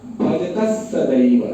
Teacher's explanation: जब विसर्ग के आगे स आएगा तो वो विसर्ग का उच्चारण विसर्ग की तरह नहीं होगा, आगे वाले स के आधे स के बराबर के जैसा होगा